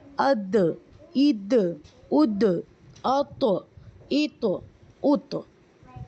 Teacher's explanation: جب ہم اس کو ساکن کے ساتھ ادا کریں گے تو ان کا مخرج ٹکر کھا کر الگ ہو جاتا ہے، جیسے اد اد اد ات ات ات، اس طرح سے. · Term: قلقلہ